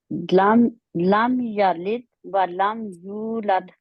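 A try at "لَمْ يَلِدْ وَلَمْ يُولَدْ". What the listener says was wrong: मैंने सुना नहीं आपका लिद में। दोबारा पढ़ें। कलकला करें।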